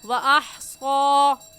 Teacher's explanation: صاد کے اوپر کھڑی زبر ہے، اسے ایک الف کے برابر کھینچیں گے